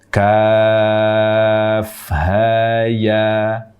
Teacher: Tetapi dalam membaca Al-Quran, tidak ada satu riwayat pun yang membaca ha, ya dengan akhiran hamzah. Yang ada ha, ya, panjang dua harokat tanpa akhiran hamzah. Jadi ha, ya, ha dan ya-nya tidak diakhiri dengan hamzah.